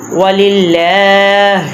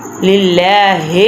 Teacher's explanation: وَلِلَّهِ الْمَشْرِقُ وَلِلَّهِ الْمَشْرِقُ وَلِلَّهِ کے للہ لام کے اوپر کھڑی زبر ہے، اس لیے ہم نے اس کو لمبا کرنا ہے، اور لام سے پہلے زیر ہے تو اس لیے ہم لام کو موٹا نہیں پڑھیں گے، لام کو باریک پڑھیں گے۔